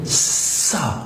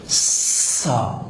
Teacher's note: اس کو نرم رکھنا ہے اور یہ سیٹی کی آواز کے بغیر ادا نہیں ہوگا